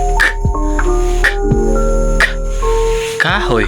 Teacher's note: At sa vilar naman, ito ay ginagamitan ng likod ng dila at malambot na ngala-ngala